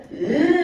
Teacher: Мені айтқан кезде ернімізді дөңгелетіп, Ө деп айтамыз.